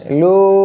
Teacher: তিন আলিফ টেনে পড়তে হবে মধ্যে মুনফাসিলের জন্য